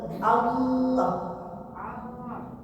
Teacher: Oh, enggak pakai tenggorokan, pakai suara mulut.